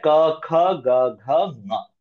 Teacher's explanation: ಖ ಗ ಘ ಞ ಹ ಅಂದ್ರೆ ಹ ಅಕ್ಷರ ವಿಸರ್ಜನೀಯ ಅಂದ್ರೆ ವಿಸರ್ಗ ಇದಿಷ್ಟು ಹುಟ್ಟೋದು ಕಂಠದಲ್ಲಿ ತ್ರೋಟ್ ನಾವು ವೈಬ್ರೇಶನ್ ಅನ್ನ ಎಕ್ಸ್ಪೀರಿಯನ್ಸ್ ಮಾಡಬಹುದು ಪ್ರೊನೌನ್ಸ್ ಮಾಡುವಾಗ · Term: ಕಂಠಹ